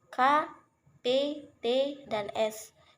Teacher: dua yaitu yang pertama bunyi mati atau bunyi tak bersuara yaitu bunyi yang dihasilkan dengan pita suara tidak melakukan gerakan membuka menutup sehingga getarannya tidak signifikan